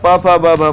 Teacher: प वर्ग, प फ ब भ म जो कि ओष्ठ से बोले जाते हैं, ऐसे ये व्यंजन स्पर्श व्यंजन कहलाते हैं।